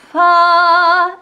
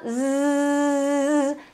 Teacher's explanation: So S like snake, no. Z like zebra or zebra or however you say it, you feel the vibrations.